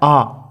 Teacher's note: आ का उच्चारण करते हैं तब जीभ के पीछे का भाग सक्रिय होता है, इसलिए आ पश्च स्वर में आ जाएगा।